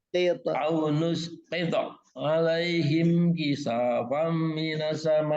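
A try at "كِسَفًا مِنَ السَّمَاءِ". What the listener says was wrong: Sa-nya jangan terlambat Pak. Sa-nya terlambat. Jadi kepanjangan. Kisafam minas sama.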